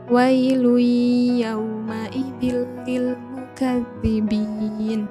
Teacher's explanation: Di situ ada huruf lam berharokat tanwin bertemu dengan ya, maka dibaca idgham bigunah.